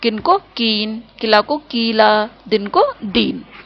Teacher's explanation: पश्चिमी भारत, गुजरात आदि में ऋष्व स्वर, छोटे स्वर को दीर्घ स्वर बढ़ा करके बोलते हैं।